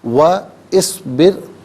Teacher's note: وَاصْبِرْ، ناظرین اصبر میں را ساکن ما قبل با کے نیچے زیر، را ساکن کو باریک پڑھیں گے، واو پر زبر ہے، اسے اصبر کی صاد ساکن کے ساتھ ملائیں گے، درمیان میں سے الف نی حمزہ کو حذف کریں گے۔